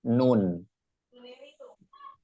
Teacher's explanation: Makhrajnya atau tempat keluarnya huruf nun itu ada di ujung lidah. Ujung lidah dan bertemu dengan gusi, gigi seri atas, nun. Di dalam sini gusi, di gusi, di situ tempatnya.